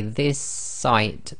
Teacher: this site so we say this site so the S effectively you're holding the s at the end of the word this and you're finishing off the sound of the s in the next word which is site so this is called germination it's effectively the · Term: gemination